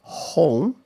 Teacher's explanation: in American English, the vowel begins with the more rounded sound, like O, and ends in a similar sound, O. So O, O.